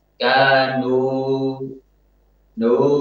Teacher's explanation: Mencampur suara waw dengan sedikit suara alif. · dia tidak sempurna ketika memonyongkan kedua bibirnya. Sehingga suara waw tercampur